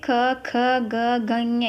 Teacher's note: ವಿಧಗಳು ಮೊದಲನೇ ವಿಧ ಯಾವುದಪ್ಪ ಅಂದ್ರೆ ಕಂಠ್ಯಕ್ಷರ ಅಂದ್ರೆ ಗಂಟಲು ಕಂಠ ಅಂದ್ರೆ ಗಂಟಲು ಗಂಟಲಿನಿಂದ ಉಚ್ಚಾರವಾಗುವಂತಹ ಅಕ್ಷರಗಳಿಗೆ ನಾವು ಕಂಠ ಕಂಠ್ಯಕ್ಷರ ಅಂತ ಕರೀತೀವಿ